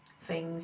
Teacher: I just did an F for a th sound